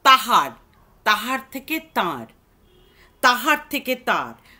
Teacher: আচ্ছা, তারপরে আবার দেখো, পরের পয়েন্ট হচ্ছে স্বর মধ্যগত কোনো হস্বর যদি থাকে, যদি থাকে, সেটাও কিন্তু লোপ পাবার একটা প্রবণতা রাঢ়ী শ্রেণীর ভাষায় পাওয়া যায়। হয়ের লোপ প্রবণতা রাঢ়ী শ্রেণীতে লক্ষ্য করা যায়।